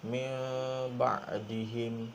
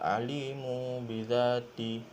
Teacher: Apabila nun mati bertemu dengan ba ataupun tanwin bertemu dengan ba, maka terjadinya satu hukum iaitu hukum iqlab. Dan cara bacaannya adalah dengung 2 harakat · mengubahkan atau menukarkan bunyi nun mati menjadi bunyi huruf mim mati serta didengungkan 2 harakat